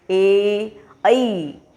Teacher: कंठ और तालु यानी हम जब ये ए और ऐ का उच्चारण करेंगे तब हम हमारे कंठ से और तालु यानी ये ऊपर वाला भाग, यहाँ से जब जीवा टकराएगी, पहले कंठ और फिर तालु से टकरा करके ये आवाज़ आएगी। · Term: कंठ तालव्य